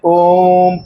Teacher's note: और एक और होता है उसमें ह्रस्व से और दीर्घ से भी ज्यादा समय लगता है। उसको हम लोग कहते हैं प्लुत।